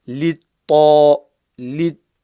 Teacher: Here we've got a ta full mouth, so littaghina, and the ghain is full mouth.